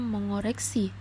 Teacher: menjadi n kemudian ada kata mengkoreksi kita itu membacanya mengoreksi karena Eng dan K itu berbeda jauh letaknya jadi diganti dengan huruf Eng